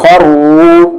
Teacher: یہ را بھی ہیوی ہے کیونکہ دونوں پر پیش آواز سامنے جا رہی ہے